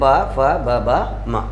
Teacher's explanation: प वर्ग का उच्चारण स्थान क्या माना गया है? ओष्ठ अर्थात होठ